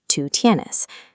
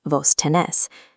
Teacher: The local dialect uses vos tenés. The stress moves to the final syllable, changing the rhythm of every sentence.